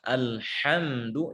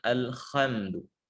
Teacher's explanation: huruf H keluar dari tengah tenggorokan, di bawahnya Kha.